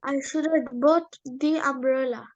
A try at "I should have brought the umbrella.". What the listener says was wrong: No, brought. R sound. Brought.